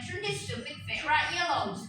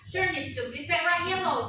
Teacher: Di sini dia bukan turn this stupid tapi satu kali ya, turn this stupid Vera yellow. Meskipun ada tanda koma di situ, tapi dia penekanannya tetap dibaca satu nafas ya.